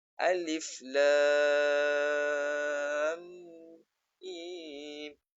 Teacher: mim yang mati bertemu mim. Maka bacaannya memasukkan. Idgham memasukkan. Maka tak boleh kita baca seperti menyebut satu huruf alif lam mim.